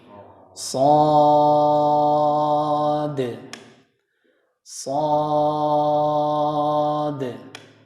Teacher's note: Karena mad lazim harus 6 harokat. Tidak boleh kurang. Karena dikatakan lazim ya.